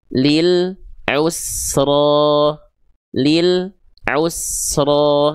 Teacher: Jadi kayak ada jedak sedikit di lamnya. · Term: lam sukunnya terputus